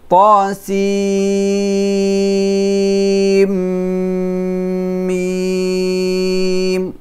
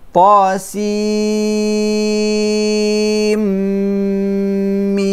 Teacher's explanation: We merge the Nun to the Mim. So the Nun become Mim.